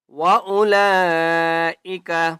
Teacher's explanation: لام کے اوپر بڑی مد ہے، 5 الف کی مقدار کھینچ کر پڑھیں گے